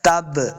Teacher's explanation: با جب حروف قلقلہ سے ہے ساکن ہے تو ہم نے اس کو خوب واضح کر کے پڑھنا ہے